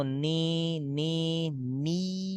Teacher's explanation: Jadi ketika tutup hidung enggak berubah suara. Nah ketika suara berubah berarti ada gunah dan itu enggak boleh. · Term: enggak boleh sengau